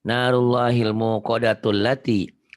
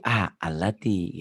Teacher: Ini namanya hamzah wasol ya. Apabila diwasol, alif ini nggak bunyi. Tapi kalau tidak diwasol, jadi a alati gitu.